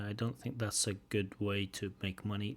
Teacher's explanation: nice chunking and again a little bit of eliding of the teas